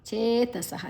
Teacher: ಚೇ ದೀರ್ಘಾಕ್ಷರ ಸಾದ ನಂತರ ವಿಸರ್ಗದ ಉಚ್ಚಾರಣೆ ಹ